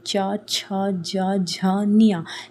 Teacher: च, छ, ज, झ, ञ। जब यह बोलते हो तो आपकी जीभ आपके मुंह के ऊपरी हिस्से आपके तालों को टच करती है। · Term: तालव्य